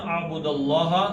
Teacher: لام اللہ کا لام موٹا پیچھے زبر آ گئی ہے